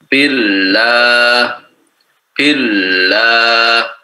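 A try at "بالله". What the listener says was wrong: Di kurang kurang tebal saja, kurang tebal ya. Nanti ditebalkan lagi. Allah, Allah. Sampai betul-betul posisi daripada halqi kita, tenggorokan kita itu hampir tertutup. Ya, hampir tertutup. Allah. Allah menyempit ya. Karena menyempit jadi seperti tertutup. Allah. Kemudian kita seperti tercekik gitu. Ya, seperti tercekik ketika kita mengucapkan mufakhamah ini, ya. Ketika mengucapkan huruf tebal ini, lam tebal ini, itu seperti tercekik. Allah, ya, karena apa? Ke atas dia.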